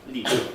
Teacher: a clear L, as we call it, that you have at the beginning of a syllable as the onset